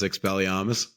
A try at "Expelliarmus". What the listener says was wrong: You didn't even say it right. There's an R. Expelliarmus. Yeah, probably.